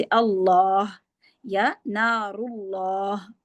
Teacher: अल्लाह के नाम का लाम मोटा पढ़ा जाता है।